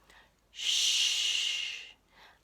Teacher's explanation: like we're we're smiling a little on our teeth or together our lips around teeth they're almost together Shh air blows out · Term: quiet sound